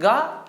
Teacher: जब आप बोलते हैं गा तो आपके अंदर से क्या होती है, स्वर तंत्री में कंपन होती है।